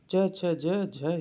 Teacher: च छ ज झ ये स्पर्श संघर्षी वर्ण के अंतर्गत आते हैं